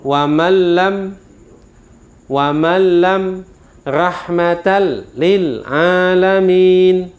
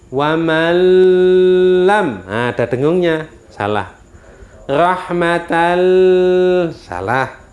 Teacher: Tanwin, bacaan tanwin masuk pada lam tapi tanpa didengungkan. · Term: idgham bila gunnah